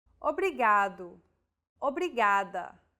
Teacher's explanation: think of the quick tapping motion your tongue makes as it strikes the top gum Ridge